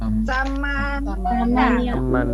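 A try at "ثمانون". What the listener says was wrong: Samanu, jangan sama niuna ya Bu ya. Samanuna.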